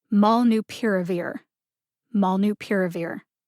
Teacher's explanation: put the primary emphasis on the syllable pier and the secondary emphasis on the syllable maul